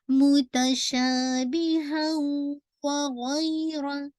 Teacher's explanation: تنوین کے بعد اگین یرملون کا لیٹر ادغام ہو رہا ہے لیکن ناقص ہے، انکمپلیٹ ادغام ہے. کیوں؟ کیونکہ کمپلیٹ ساؤنڈ مرج نہیں ہو رہا، تو آپ کا ادغام تو ناقص ہے، انکمپلیٹ ہے، بٹ آپ کا جو غنہ ہے، رینکنگ آف غنہ، یہ موسٹ کمپلیٹ غنہ ہے.